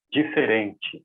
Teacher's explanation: O que chama atenção para nós, no português europeu, é essa contração, esse desaparecimento das vogais